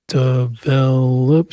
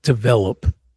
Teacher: Condition, stress on the second syllable, condition. Develop, stress on the second syllable, develop.